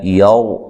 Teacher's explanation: را کو موٹا ادا کرنا ہے، پیچھے زبر ہے، را ساکن سے ما قبل زبر اور را کو موٹا ادا کیا جاتا ہے۔